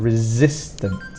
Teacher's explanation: notice this s is more of a z sound